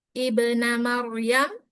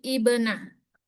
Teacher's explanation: Di awal bacaan, walaupun huruf ketiganya berubah-ubah, hamzah wasal selalu dibaca i pada kata benda isim